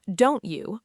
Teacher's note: The t and y sounds blend together into a ch sound. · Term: assimilation